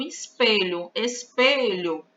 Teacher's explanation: a sílaba forte é a penúltima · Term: paroxítonas